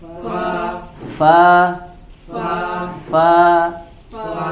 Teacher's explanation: seperti huruf f ya Fa Ya itu adalah batnisyafah perutnya ee bibir bagian bawah ya bersentuhan dengan gigi bagian atas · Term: huruf Fa